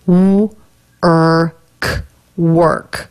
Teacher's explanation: this vowel doesn't really have a sound by itself it just blends with the r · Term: r vowel consonant combination